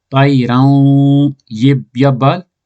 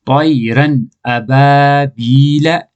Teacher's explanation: زبر تنوین تو بعد الف دوجا کلمہ ما ہے اس واسطے دو زبر تنوین کی نون ظاہر کر کے پڑھا گا